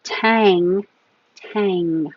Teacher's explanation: and Aang with the inji the tongue high in the back the back of the tongue is touching the back of the top of the mouth